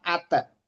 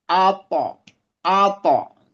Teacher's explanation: Berubah jadi ta. Ta itu huruf ta nggak kol-kolah. Yang kol-kolah huruf to.